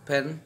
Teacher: The initial pa of pen is phonetically aspirated. It is produced with a puff of air.